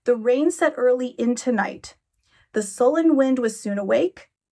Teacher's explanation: This is illustrated further with the fact that prior to Porphyria's arrival, the poem is written in lines that are end-stopped, meaning there is a deliberate pause given at the end of each line to indicate control, order, and to emphasize a clear rhythmic scheme